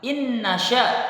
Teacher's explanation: Kemudian pada ayat yang keempat, innasya, pada kata tersebut terdapat hukum bacaan nun sukun atau tanwin, ya, hukum nun sukun atau tanwin, yang mana di situ nun sukun bertemu dengan huruf nun, maka ini termasuk hukum bacaan idgham bi gunnah, yaitu dengan gunnah membacanya